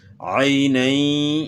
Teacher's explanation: معروف پڑھنا ہے، عے نہیں پڑھنا، مجھول نہیں پڑھنا، معروف پڑھنا ہے، عئی پڑھنا ہے